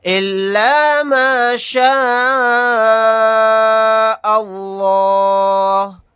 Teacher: اس لفظ اللہ کے لام کو موٹا یعنی پر پڑھیں گے کیونکہ اس سے پہلے زبر ہے اور یہاں پر مد متصل کا قاعدہ ہوگا. الف مدہ کے بعد حمزہ اسی کلمے میں ہے تو اس مد کو 4 الف کی مقدار کھینچ کر پڑھیں گے